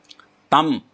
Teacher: टम, ये थोड़ा सा मूर्धा से, मूर्धन्य स्थान है, मूर्धा से जीभ टकराती है तो मूर्धन्य स्वर बोलते हैं इनको, मूर्धन्य व्यंजन बोलते हैं इनको। और तम, ये दंत्य है, यानी कि जीभ दांत से लगती है